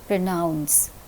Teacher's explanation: In the word pronounce, the second syllable is receiving the accent, pronounce. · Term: word accent